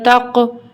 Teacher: یہاں پہ قاف میں ہماری آواز پلٹ کر آئے گی کیونکہ یہ حروف قلقلہ کا حرف ہے